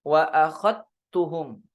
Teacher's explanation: Sedangkan di riwayat Syu'bah bi idghamiz dzali fit ta, dengan mengidghamkan, memasukkan zal ke ta. Jadi dileburkan.